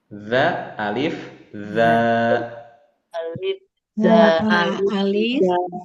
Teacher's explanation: huruf dza yang bertitik dari ujung lidah yang bertemu dengan ujung gigi seri